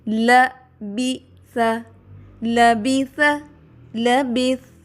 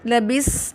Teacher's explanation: لبیس نہیں پڑھنا اس کو، اس میں صفت صفیر نہیں بلکہ صفت ہمس ہے، اس لیے صرف اس میں سانس آئے گا، آواز نہیں آئے گی